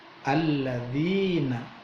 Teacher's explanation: ada ya mati setelah harokat kasroh, bacaannya mad tobi'i, panjangnya 2 ketuk